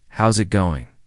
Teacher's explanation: Instead, how is it going becomes how's it going? The is disappears and the final G in going often softens. This is called connected speech.